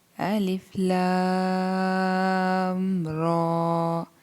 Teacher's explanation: یہاں صرف لام کو لمبا کرنا ہے